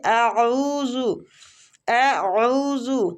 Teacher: عین جو ہے یہ وسط الحلق حلق کے درمیان والے حصے سے نکلے گا